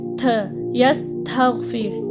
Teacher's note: جو تا ہے نا اس کی آواز تھ کر کے نکلنی چاہیے, تھ, یستغفر, ٹھیک ہے, ایسے. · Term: ہمس